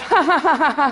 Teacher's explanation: you find nasality in posed laughter, that kind of ha-ha-ha-ha sound, that you never get, you could not do if you were laughing involuntarily.